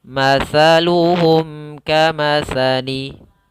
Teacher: mimnya harus jelas cara bacanya tidak boleh ditahan mimnya tidak boleh matsaluhum kamsali tapi langsung saja matsaluhum kamatsali kamatsalilladzistauqodanao lilladzi · Apabila ada kaf datang setelah huruf mim mati, maka hukum bacaannya pada bacaan ini yaitu izhar syafawi. Maka mimnya harus jelas, cara bacanya tidak boleh ditahan mimnya.